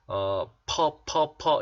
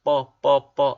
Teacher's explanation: 자, 그런데 P 사운드는 원래 파열음이기 때문에 다문 입술의 형상에서 터트리면서 바람을 터트리면서 소리 내죠. 그런데 S 다음에 P가 붙으면 된 소리로 납니다. 경음화 현상이 일어나는 거죠. 된 소리로 나기 때문에 퍼 이런 식으로 발음하지 않고 뻐 이렇게 발음이 돼야 됩니다.